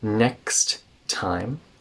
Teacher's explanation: we take out that D and the next time connect those two T's together